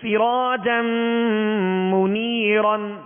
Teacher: سین کو سیٹی کی آواز میں پڑھیں گے